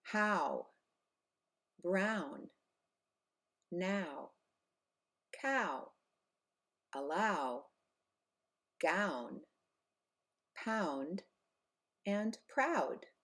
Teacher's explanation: the letter O pronounced as the diphthong ow it's an AA and a new together how Brown now cow